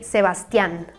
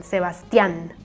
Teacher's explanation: Again, like the A has this tilde thing, so you make an emphasis in the last syllable